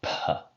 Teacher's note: So originally it would have been something like p, really breathy and sort of an explosion of air outside the mouth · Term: aspirated consonant